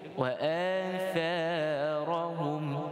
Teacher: hum yang akhir dibaca dengan izhar, tidak ada dengung. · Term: izhar syafawi